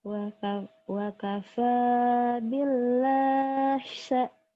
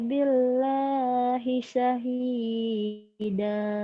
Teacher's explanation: mad iwad kan dua patah dibaca satu dan panjangnya kayak mad tobi'i gitu